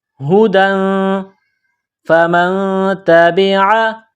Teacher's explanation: کے ساتھ پلس کرنا ہے، نون ساکن کے بعد تا ہے، حروف اخفا ہے تو یہاں آواز ناک میں چھپائیں گے، غنہ کریں گے